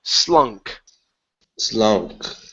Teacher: So it's an unvoiced S at the beginning and a K sound at the end.